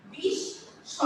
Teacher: দন্তা শটাকে কি হচ্ছে দুইবার উচ্চারিত হচ্ছে